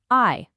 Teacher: It starts as an a and glides into an e.